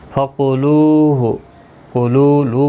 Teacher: واو مدہ ہے، 1 الف کی مقدار کے برابر کھینچ کر پڑھیں گے